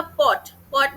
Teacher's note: पॉट में औ की आवाज आ रही है एक ही वोवेल